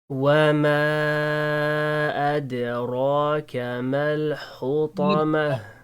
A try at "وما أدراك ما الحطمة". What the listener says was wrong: Raw. Don't round. It's easy, but this is not correct. Yes, raw.